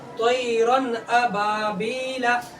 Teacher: یہاں پہ اظہار کا قاعدہ ہوگا، یعنی اس تنوین کی آواز کو، اس نون ساکن کی آواز کو جلدی ظاہر کر کے پڑھیں گے، آواز نہیں روکیں گے